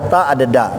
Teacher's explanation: ujung lidah nempel di pangkal gigi atas, tapi yang sebelah atas tuh.